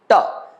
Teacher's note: ट बोलते समय हमारी जिह्वा जहां पर जाती है, ट, वो स्थान कहलाता है मूर्धा